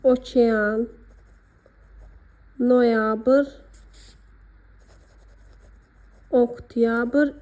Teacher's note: Amma okean, noyabr, oktyabr istisna. Burda o üzərinə vurğu düşməsə də, o a-ya çevrilmir.